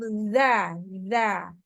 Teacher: Zal ujung lidah bertemu dengan ujung gigi seri atas.